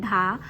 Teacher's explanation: टा वर्ग मूर्धन्य उच्चारण स्थान से उच्चारित होता है